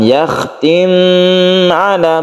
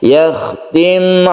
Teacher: langsungkan ketika sukun mim langsung ke ala tanpa ditahan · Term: izhar syafawi